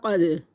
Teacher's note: क़ाफ दाल दोनों रूफ़ क़लक़ला हिलाएंगे